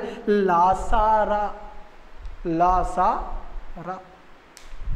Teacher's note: दंत मूलक, अर्थात कह सकते हैं मसूड़े से निकलने वाली ध्वनि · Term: वत्सर्य ध्वनि